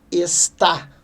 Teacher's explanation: Última sílaba é a mais forte. Oxítona.